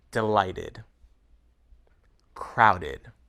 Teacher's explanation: The pronunciation id adds an extra syllable to the word.